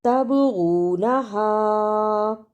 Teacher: با جزم کی صورت میں حرف قلقلہ ہے یعنی اس لفظ کو ہلا کر پڑھنا ہے